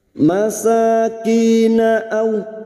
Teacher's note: ki kasrah diikuti sukun 2 harokat mad tabi'i